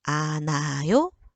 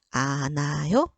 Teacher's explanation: 히읗 다음에 모음으로 시작되는 어미가 왔죠. 그런 경우에는 히읗 소리 나지 않아요.